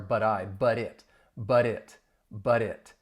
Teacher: that final T in but, it's gonna sound like a flat T when I say it